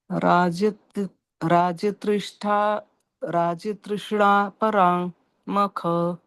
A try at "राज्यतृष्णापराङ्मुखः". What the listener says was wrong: पराङ्मुखः। मुख होना चाहिए। राज्य तृष्णा पराङ्मुखः। ज्येष्ठे राज्यतृष्णा पराङ्मुखः। पराक् मुखः।